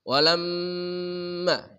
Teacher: Walamma, ini gunnah mim bertasyid di satu kata namanya mim musyaddadah tajibul gunnah. Mim bertasyid wajib dibaca dengan mendengung